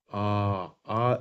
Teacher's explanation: पूरा मुंह खुला रहता है जैसे आप बो बोलिए आ आ जब आप आ बोलते हैं ना तो मुंह सबसे ज्यादा खुलता है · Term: विवत स्वर